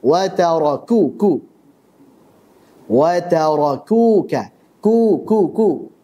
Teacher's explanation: Kaf saat dhammah ini ketipisannya harus dijaga. Karena kalau tidak maka akan menjadi seperti huruf qaf.